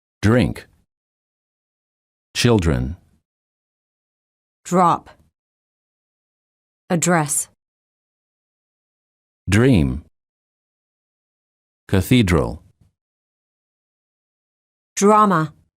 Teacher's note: is followed by an R the D changes and becomes an almost J